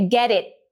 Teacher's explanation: em vez de eu falar it, é comum que esse T final simplesmente não exploda.